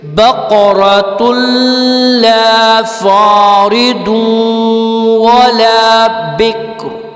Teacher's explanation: را کو تھوڑا سا ہم ہلکا سا پڑھنے کی کوشش کریں گے چونکہ بکرن ہے اس لیے, اور وقفہ لازم ہو چکا ہے.